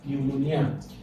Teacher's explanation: when you call this word, P is silent. You don't hear the sound P.